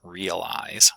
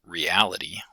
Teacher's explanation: realize with stress on the first syllable but reality with stress on the second syllable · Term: lexical stress